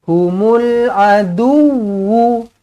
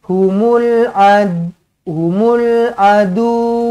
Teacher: huruf wau ada sabdu maka kena tekankan